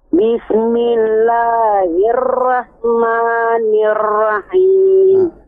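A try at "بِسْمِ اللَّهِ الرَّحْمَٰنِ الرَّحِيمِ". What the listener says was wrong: Bismillahirrahmanirrahim. Tidak hirrahman, kebanyakan.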